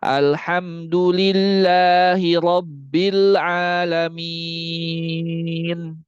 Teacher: jangan membaca kalimat alamin lebih daripada dua harakat ainnya